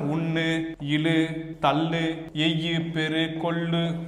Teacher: சொல்லின் இறுதியில் வந்துச்சுன்னா அந்த இடத்துல ஊ குறையவே குறையாது · தன் ஒரு மாத்திரையிலேயே உகரமானது முழுமையாக ஒலிக்கும். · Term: முற்றிய லுகரம்